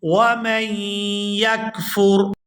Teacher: یہاں میم کو یا مشدد کے ساتھ ملا کر پڑھیں گے